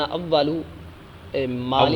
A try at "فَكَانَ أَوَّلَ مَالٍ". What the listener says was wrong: اولو نہیں پڑھنا، اولا.